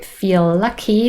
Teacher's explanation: linking between feel and lucky consonant to consonant we only say one sound